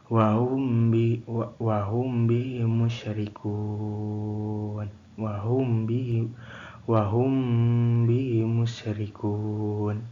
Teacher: Hukum ini terjadi apabila mim sukun bertemu dengan huruf ba. Cara membacanya adalah dengan samar dan dengung selama 2 harokat. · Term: IPA Syapawi